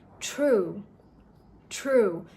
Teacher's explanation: while you're pronouncing the t sound, you're also releasing a puff of air with t. So it becomes kind of like a t plus h sound. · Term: true T sound